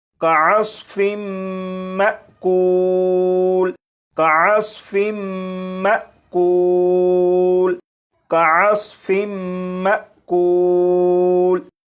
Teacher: اب ان دونوں الفاظ کو پڑھیں گے، یہاں پر میم مشدد پر غنہ بھی ہوگا اور یہاں پر الف کے اوپر جزم ہے، یعنی یہ حمزہ ساکنہ ہے، تو حمزہ ساکنہ کو جھٹکا دے کر پڑھیں گے